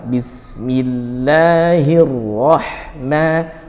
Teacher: rah huruf H dari tengah tenggorokan sebut dengan waslul halqi, rah, seperti itu ya, bukan roh tapi roh.